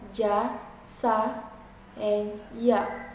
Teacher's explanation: These sounds are produced when the blade of the tongue, middle of tongue, touches the hard palate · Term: palatal sounds